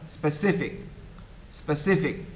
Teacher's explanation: faculty you say specific stretching the first syllable which is wrong the second syllable should be stress